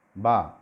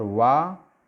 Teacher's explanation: बा होठों से, और वा दांत और ओष्ठ से, नीचे वाला ओष्ठ ऊपर वाले दांतों से उच्चारित होता है